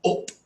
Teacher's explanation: If you meet someone from London, it'll actually sound more like an a in cat. They'll say, going up the road, up.